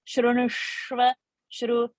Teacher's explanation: Plus, the next word is Shra half, which is a Murdhani Sh. So the tongue immediately should touch the roof of the palate to say that half Sh